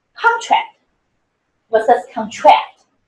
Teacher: for nouns, the stress always is on the first syllable. But for the verb, the stress is on the second syllable.